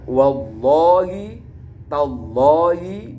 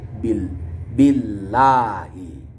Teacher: Hukum lafaz jalalah ketika sebelumnya ada huruf dibaca kasroh, maka hukum bacaannya dibaca tarqiq atau tipis.